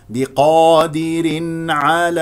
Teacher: تنوين جاء بعد التنوين عين اذا اظهار